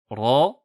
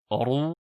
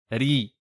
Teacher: Tout d'abord, la lettre Ra possède une sifa appelée at-takrir en arabe, qui correspond à une vibration de la langue contre la gencive interne supérieure, ce qui donne, avec une fatha, Ra, avec une dhamma, Ru, et avec une kasra, Ri.